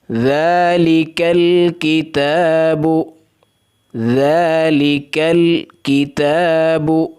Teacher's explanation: ذال کو نرم کرنا ہے، کاف کو باریک کرنا ہے۔ الکتاب، تا کے اوپر کھڑی زبر ہے، ایک الف سے زائد اس کو نہیں کھینچنا۔